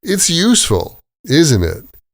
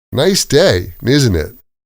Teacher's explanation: Again, that's falling intonation. The voice drops at the end. It's technically not a question.